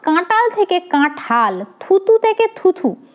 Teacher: অল্পপ্রাণ বর্ণ মহাপ্রাণ বর্ণের মত উচ্চারিত হলে তাকে পিনায়ন বলে